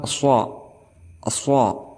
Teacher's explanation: berada di ujung lidah bersama lapisan bagian dalam gigi-gigi seri bagian bawah